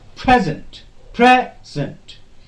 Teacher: Pre will be bit louder, bit longer, on a higher pitch than zen.